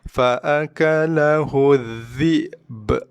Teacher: Hamzah mati, dhi'b. Qalqalahkan ujung ba mati